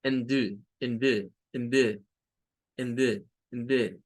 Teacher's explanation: a veces se deja sin poner sonido vocal, o sea, solo se hace sonar la D